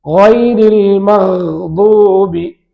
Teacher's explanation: தொண்டையின் மேல் பகுதியிலிருந்து கைன் வருகிறது